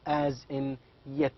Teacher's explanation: the sound Y is also voiced palatal as in yet